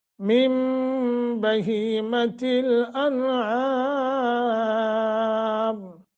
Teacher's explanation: मिन बहीमतिल अनआम, मिम नून साकिन के बाद बा आ गया, इक़लाब का क़ायदा है, तो नून को मीम से बदल कर पढ़ेंगे. मिम गुन्ना भी करेंगे.